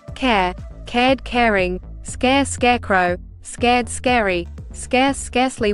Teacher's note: They are technically spelled like long A, but the sound of the A has been distorted by the controlling R and is changed to this special R-controlled sound